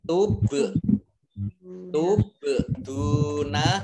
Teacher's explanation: Bal sukun, bacaan kolkolah ya, atau mantul